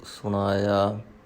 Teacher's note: ਸੁਣਾਇਆ ਨੰਨਾ ਨਹੀਂ ਲਾਉਣਾ, ਨਾਣੇ ਦਾ ਉਚਾਰਨ ਕਰਨਾ ਹੈ।